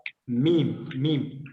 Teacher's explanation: میم ہونٹوں کے اندرونی خشک حصوں کو آپس میں ملا کر ادا ہوتے ہیں. میم میم اس کو آپ یعنی ان اوپن جگہوں کو بھی آپ ملائیں تو یہ میم ادا ہو جاتا ہے.